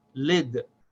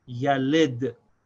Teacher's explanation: Then there's lam with kasra, which is pronounced le, but the lam is followed by a dal with sakin, so we have to join those two. The lam and dal should be joined as one syllable, and you stop on the sound of the dal, so we pronounce these as lid.